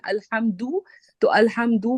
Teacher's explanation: الحمدو کہیں گے اور ہونٹ ہم گول کر دیں گے فوراً سے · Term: اشمام